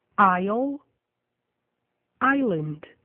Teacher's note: o S e o L aparecem na palavra escrita, mas o S não é pronunciado